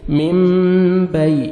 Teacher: تو نون ساکن کے بعد دیکھیں با ہے تو آپ نے نون کو میم میں چینج کرنا ہے، میم اخفا کرنا ہے. ٹھیک ہے، نون کو میم میں چینج کر کے نوز میں ساؤنڈ لے کے جائیں گے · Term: اقلاب